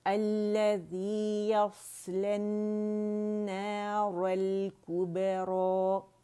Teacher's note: الف جو مقصورہ ہے وہ را کی آواز کو 2 کاؤنٹ کھینچے گی